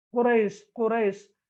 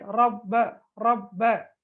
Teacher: ராவுடைய எழுத்துக்கு ஃபத்ஹா வந்திருந்தால் அல்லது லம்மத் வந்திருந்தால், ஃபத்ஹா அல்லது லம்மத் வந்திருந்தால் வல்லினமாக ஓத வேண்டும்